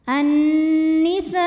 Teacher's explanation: Alif didahului baris fathah kemudian hamzahnya i pada kata annisai maka sinnya dipanjangkan boleh empat boleh lima harakat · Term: mad wajib muttasil